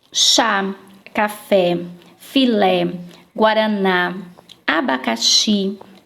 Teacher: todas essas palavras aqui ó desde quadros são oxítonas Isto é a última sílaba da palavra é a mais forte